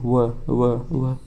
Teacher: व में हमारे जो ओठ है वो ऊपरी दांतों को स्पर्श करते हैं